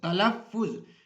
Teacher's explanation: فے کے اوپر جو ہے وہ شد ڈالی ہوئی ہے اور فے کو ہم 2 مرتبہ جو ہے وہ پڑھتے ہیں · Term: تشدید